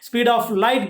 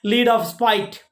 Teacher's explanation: transposing initial consonants in the speed of light gives the lead of spite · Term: spoonerism